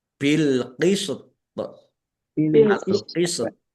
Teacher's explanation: dan thnya diqalqalahkan dipantulkan